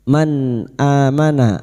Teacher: Nun sukun bertemu Hamzah idhar halqi. Nun sukun dibaca jelas tanpa mendengung